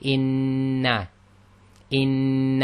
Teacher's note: instead of saying in and then taking a break and saying na We join it together we do the doubling up we say in in and we · we hold the noon for a count of 1.5